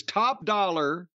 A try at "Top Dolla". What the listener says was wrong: Dollar. not dollar. But it's spelled Dolla. It's not top dollar.